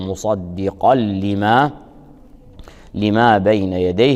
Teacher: نون التنوين اللفظية تدغم بحرف اللام